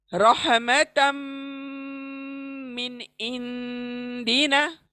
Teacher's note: यहाँ पर इख्फा हो रहा है, नून का इख्फा हो रहा है, नाक में आवाज को लेकर जाना है। · रहमतन, मिन और इंदिना। तो रहमतन तनवीन मीम में हम मिला देंगे, गुन्ना करते हुए।